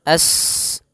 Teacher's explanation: sifat sofirnya sifat mengalirkan nafas atau berdesis seperti suara burung. As. Nah, dialirkan nafasnya juga, dia termasuk huruf hamas.